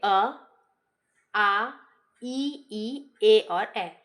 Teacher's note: पहला आपका हो जाएगा अवृत्तमुखी। अवृत्तमुखी के अंतर्गत आपके होते हैं जिसमें होठ की जो आकृति है वो गोलाकार नहीं होती है। इसके अंतर्गत आपके आ जाएंगे अ, आ, ई, ए और ए।